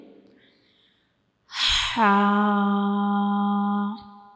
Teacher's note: हा जो है ये हरूफ हल्की है। तो इसको हम अपने हलक से जो है वो अदा करते हैं।